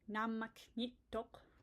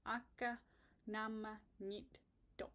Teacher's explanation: So one quick rule for nit is it has to come after a vowel. So notice how namak ends in a K. Nit is going to erase that. So instead of namak nitok, which is really hard to say, it doesn't really flow well, we just get rid of the K and it's akka nama nit tok.